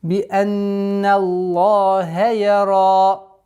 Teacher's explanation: Я мягкий звук, ра твердое и ударение в размере 2 огласовок.